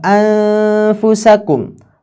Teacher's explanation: Takunu nunu mukhfah, maka nunnya menjadi samar. Ya, nunnya menjadi samar min makhrajil fa, karena ada sebab makhraj fa.